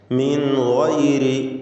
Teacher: മിൻ ഗൈരി ഇവിടെ സാക്കിനത്തായ നൂനും ശേഷം ഗൈനുമാണ്. ഇദ്ഹാർ ഹൽഖി നൽകി മണിക്കാതെ നൂനിനെ വെളിവാക്കേണ്ടതാണ്.